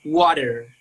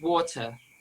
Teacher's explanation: If you want to speak like American, you have to change the T sound to D sound.